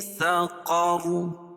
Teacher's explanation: وقف کی صورت میں رائے ساکنہ سے پہلے زبر آ جائے گی تو را کو پر پڑھیں گے، اور وصل کی صورت میں بھی را پر ہوگی.